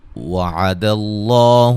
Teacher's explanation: لفظ اللہ کے لام کو موٹا ادا کریں گے